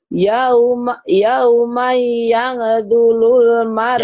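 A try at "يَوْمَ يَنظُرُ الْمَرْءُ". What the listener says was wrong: Yang zurul, bukan yang dulul, yang zurul. Jadi yang dulul. Yang zurul, iya.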